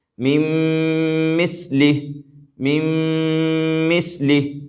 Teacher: یہاں پر میم کو میم سے ملائیں گے لیکن غنہ کے ساتھ ملائیں گے